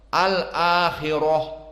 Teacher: Hafs an Asim dan Ya'qub al-Hadrami dan semua jumhur membaca al-akhirah dengan ra mufakhamah.